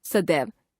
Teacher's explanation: जैसे सदा तथा एव शब्दों के मिलने से सदा शब्द की अंतिम ध्वनि आ तथा एव शब्द की पहली ध्वनि ए परस्पर मिलकर ए हो जाती है और शब्द बनता है सदैव। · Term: संधि